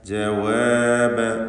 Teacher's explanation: ഫമാ കാന, ഫമാ കാന പറയില്ല, മറിച്ച് ഫമാ കാന ജവാബ, ജവാബ വ 2 ചുണ്ടുകളിൽ നിന്ന് തന്നെ വരണം